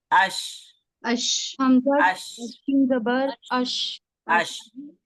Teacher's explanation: शीन जबान के बीच उसके मुकाबिल ऊपर के तालू से अदा होता है।